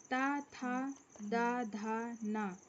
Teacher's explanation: ता, था, दा, धा, ना, दंत, ता वर्ग यानी ता से शुरू होता है और दांतों में स्पर्श होता है जीभ का